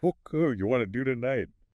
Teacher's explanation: And want to famously becomes wanna.